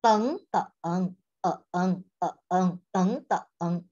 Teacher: If the third tone is at the end, you need to read down a bit, up a bit.